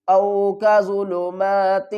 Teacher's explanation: اخفا کس طرح کرنا ہے، او کا ظلمات، آواز ناک کی طرف جائے گی اور ناک سے ہی آواز خارج ہوگی